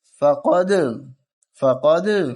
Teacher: قلقلہ ہوگا، دال کی آواز ڈبل آئے گی